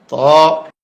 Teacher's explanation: ত, এ হরফটি 1 আলিফ পরিমাণ লম্বা হবে, জিহ্বার আগা উপরের দাঁতের গোড়ায় ভিতর দিয়া ধাক্কা দিয়ে মুখ খুলে দিবে